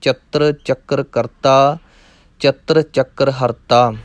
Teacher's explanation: ਇਹ ਪਾਠ ਚਤਰ ਚੱਕਰ ਇਹ ਕੱਸ ਕੇ ਹੀ ਕਰਨੇ ਹਨ ਕਿਉਂਕਿ ਇਹਨਾਂ ਦੇ ਉੱਪਰ ਅਧਕ ਲੱਗਾ ਹੋਇਆ ਹੈ, ਇਸ ਲਈ ਪੋਲੇ ਨਹੀਂ ਕਰਨੇ